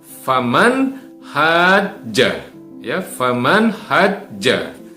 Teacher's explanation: ini nun matinya harus dibaca dengan izhar atau dibaca dengan jelas